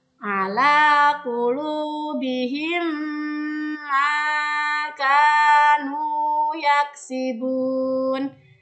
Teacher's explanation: Posisi bibir ketika membaca idgham mimi adalah tertutup dan sedikit bergetar untuk mendengungkan bacaan mim tersebut · Ada mim sukun bertemu dengan huruf mim yang berharokat. Cara membacanya adalah dengan meleburkan 2 bunyi mim tersebut disertai dengan dengungan